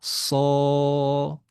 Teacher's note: Shadnya jadi panjang. Alifnya jadi tebal. Sho. Panjang dua harakat.